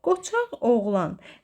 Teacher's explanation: Deməli, burada birinci Q, Q kimi, ikinci Q özündən sonra sait gəldiyi üçün G kimi tələffüz olunacaq.